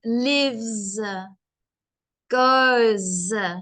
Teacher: if the verb or the action um ends in e so live or go then it's like a z sound